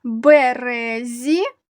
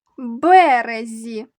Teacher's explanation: у слові березі наголошений другий склад РЕ у слові березі наголошений перший склад